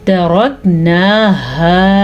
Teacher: रॉ पुर पढ़ेंगे क्योंकि रॉ पे ज़बर है। नून खड़ी ज़बर ना, कैसे होगी, खड़ी खींच के पढ़ेंगे।